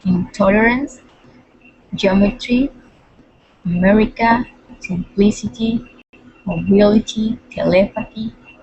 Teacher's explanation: Only one stress on the second syllable. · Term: stress in the second syllable